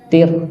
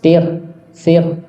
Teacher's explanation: te tebal ya apa memang bisa jadi tipis bisa ketika misalnya huruf sebelum ro sukun ini berharakat kasr maka dia tipis